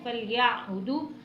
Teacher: زبر یا، فَلْيَع، با پیش بو، دال واو پیش دو، فَلْيَعْبُدُوا، یا کو عین سے ملانا ہے اور عین کو حلق سے لازمن ادا کرنا ہے